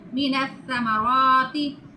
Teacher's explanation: مَاءً فَأَخْرَجَ بِهِ، سا کے اوپر شد ہے، نون کے ساتھ ملا کے پڑھیں گے اور تا کی سیٹی کی آواز نہیں آئے گی۔ تا کو اوپر والے اور نیچے والے دانتوں کے درمیان زبان کر کے ادا کرتے ہیں۔